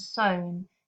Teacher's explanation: The sown is significantly lower in its tone. And these falling lilts of the vowel sounds from a higher to a lower pitch create a really understated melancholy effect.